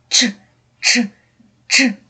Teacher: коли ми вимовляємо звук ч діти то ми не можемо його довго протягувати